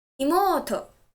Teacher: Stress the syllable mo